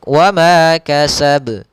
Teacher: qalqalah itu artinya memantul, ya ittirab dalam bahasa Arabnya, ada sedikit pantulannya